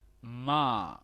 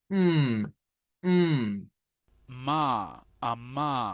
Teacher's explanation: Nosotros estamos acostumbrados a hacer mm, Ma. pero esta es una M labiodental que se parece más a una N